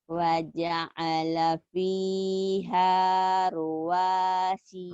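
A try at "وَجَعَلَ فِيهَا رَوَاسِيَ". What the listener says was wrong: Rawa, bukan ruwa. Rawa. Rawa. Waja'ala fiha rawasiya.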